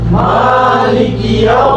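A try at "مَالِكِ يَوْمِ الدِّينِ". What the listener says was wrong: মা একটু টান হবে মা এক আলিফ মা আছে মা কি আছে এক আলিফ মালিকি ইয়াউম মিদ্দিন মিদ্দিন একসাথে মালিকি ইয়াউমিদ্দিন মালিকি ইয়াউমিদ্দিন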